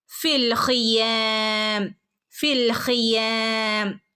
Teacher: ഫിനെ ലാമിലേക്ക് ഫിൽ എന്ന് പറഞ്ഞ് കൂട്ടി ചേർത്ത് ഓതണം